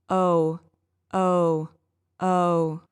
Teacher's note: notice that my lips close in a little bit and become almost a circle